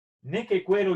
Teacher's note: La U después de la Q suena, por lo tanto es neque, cue, y el diptongo conformado por la A y la E se pronuncia, la leemos, lo leemos con el sonido de E